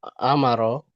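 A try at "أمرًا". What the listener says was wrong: Mimnya sukun amron.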